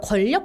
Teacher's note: 권력 같은 단어들은 니은 받침이 리을로 바뀌어서 소리 나게 되는 현상이 나타나거든요. 이런 걸 유음화라고 합니다.